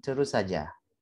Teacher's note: ada 2 S yang mana itu serupa atau sama, kita bisa menghubungkannya dengan menjadikannya pelafalan terus saja. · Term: same or similar sound